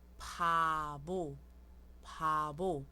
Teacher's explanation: BP, que é um som entre B e P